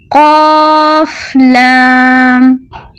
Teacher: زبان کی جڑ سے آواز نکالیں